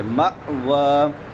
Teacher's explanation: ادھر پھر ہمزہ آ رہا ہے میم کے بعد تو یہاں پہ جھٹکا دیں گے